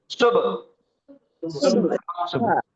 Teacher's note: ایک تو با ساکن ہے, تو با کے اوپر جزم آیا تو با 5 حروفوں میں سے ہے, قاف, طا, با, جیم اور دال. تو با کی آواز ٹکرا کے ایکو ہو کے قلقلہ کر کے پڑھیں گے